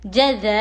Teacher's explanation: حروف مدہ کے بعد حمزہ اسی کلمے میں ہو تو مد متصل ہوگا. 5 الف کے برابر کھینچیں گے. 3 یا 5 الف کے درمیان میں اس کو کھینچ سکتے ہیں.